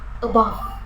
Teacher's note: Kata pertama tidak mendapatkan tekanan dan suku kata kedua mendapatkan tekanan.